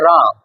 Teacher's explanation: प्रकंपित इसलिए क्योंकि जब रा बोलते हैं तो आपकी जीभ तालु के साथ क्या होती है? बार बार घर्षित होती है, इसीलिए इसको प्रकंपित या लुंठित वर्ण भी कहते हैं। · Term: प्रकंपित व्यंजन